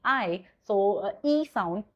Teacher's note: for long I you will say this is front close unrounded vowel because when you are uh speaking I so e sound so your lips are not rounded theirs are unrounded.